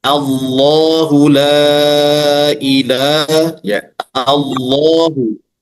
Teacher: dibaca tebal karena ada lafzul jalalah ya kemudian sebelumnya fathah